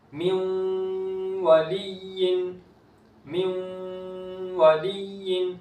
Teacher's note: نون ساکن کے بعد واو ادغام ہو رہا ہے، نون کی آواز کو باقی رکھیں گے